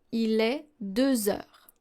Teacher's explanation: since we don't have an X sound in liaison, we are going to use the Z sound.